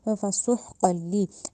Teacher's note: فسح میں جو ہا ہے وہ حلق سے ادا کرنا ہے، ہا کی ساؤنڈ نہیں دینی، ہا حلق سے ادا ہونا چاہیے ہے، ٹھیک ہے۔